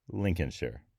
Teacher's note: whenever you end a word with that R sound then what you've got there is an r-colored schwa